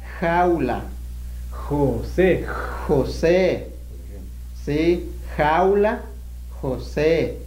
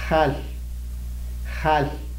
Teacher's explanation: el sonido de la J es un poco más fricativo, así se le llama. En términos lingüísticos.